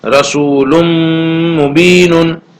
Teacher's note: تو رسول، تنوین کی جو آواز تھی جو نون ساکن کی طرح ہے، تو یہ تنوین کی آواز اب یہاں پر میم میں مل جائے گی اور تنوین کا ادغام میم میں ہوگا، اس لیے رسول مبین اس طرح نہیں پڑھیں گے، تنوین کو میم میں ملا کر پڑھیں گے